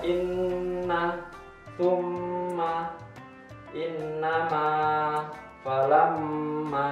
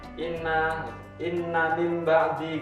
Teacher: Ini cukup jelas, ada nun ketika di dalam Al-Quran ada nun bertasjid atau mim, maka itu dinamakan bacaan gunnah. Adapun cara bacanya adalah dengan dua harokat maupun dua ketukan mendengungnya.